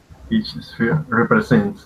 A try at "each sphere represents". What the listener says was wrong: exactly because you're talking about the sphere,